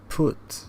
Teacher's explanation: notice how it is high and back it's almost touching the roof but at the back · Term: high back vowels